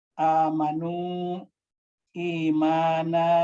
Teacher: Amanu, imana, itu kan hamzah dipanjangkan. Hamzah yang dipanjangkan, ini mad badal.